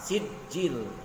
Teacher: Sijil itu jangan dikol-kolakan walaupun itu huruf jim, kol-kola. Tetapi dia harus ditegaskan.